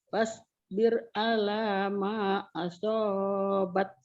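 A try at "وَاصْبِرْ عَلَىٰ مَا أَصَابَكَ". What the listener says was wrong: Sabar, bukan asobat, asobak, kap ujungnya. Wasbir ala ma asobak, bak, bukan bat, asobat, bukan asobat, asobak.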